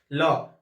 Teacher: इसे पार्श्विक वर्तस्य व्यंजन इसलिए हम कहते हैं क्योंकि एक तो इसका उच्चारण कहां से होता है, ल, है ना, ऐसा लग रहा है हमें साइड से आवाज आ रही है हमारे, ठीक है, इसलिए इसे हम पार्श्विक या वर्तस्य व्यंजन कहते हैं, ठीक है। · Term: पाशर्विक व्यंजन